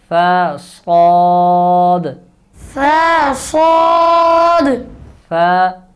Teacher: آواز ہے، لیکن فرق کریں گے، ثا نرم ہے باریک ہے، صاد یہ موٹا حرف ہے، اس کو پر کریں گے موٹا کر کے پڑھیں گے، اور اس میں سیٹی ہے